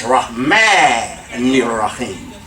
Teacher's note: Ma is a syllable, and then the noon goes and connects with the next word.